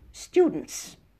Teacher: student, we have an N and a T at the end, but when we add an S, we delete the T.